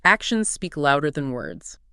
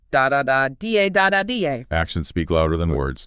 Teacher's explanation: It has a heavy stress on action louder and words.